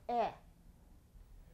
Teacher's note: towards the middle of the mouth is the peak of the tongue it's towards the middle of the mouth but it's still high in the mouth